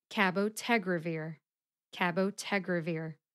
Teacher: the primary emphasis is on the syllable tag the secondary emphasis is on the syllable Ka